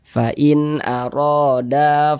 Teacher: Nah da dibaca panjang karena ada Alif sebelumnya ada huruf yang memiliki tanda baca fathah